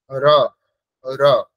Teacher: হবে না এখানে ইয়াদা ইয়াদা বলতে হবে তারপরে দেখুন র আছে র এর স্থান হচ্ছে মূর্ধা